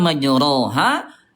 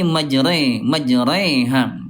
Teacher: pertengahan antara fathah dengan kasrah kayak ke e nih bunda ya. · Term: imalah